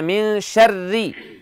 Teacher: کسرہ ہے اس کی وجہ سے را کو باریک پڑھیں گے، ٹھیک ہے۔ تو جہاں کسرہ آ گیا وہاں را کو باریک پڑھنا ہے، وہ تشدید کے ساتھ ہو، بغیر تشدید کے ہو، یا جیسے بھی ہو۔